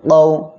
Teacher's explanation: জবরের বামে জজমালা ওয়াও, জবরের বামে জজমালা ইয়া হইলে লিনের হরফ হবে। লিনের হরফে এক আলিফ টেনে পড়তে হবে